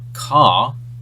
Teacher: an Australian accent the r sound is ah